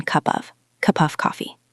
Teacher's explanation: Of ends in a v sound. Coffee starts with a k. They don't link perfectly. So we just say them closely.